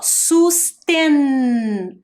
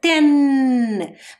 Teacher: olha a posição da minha língua ten bateu lá no céu da boca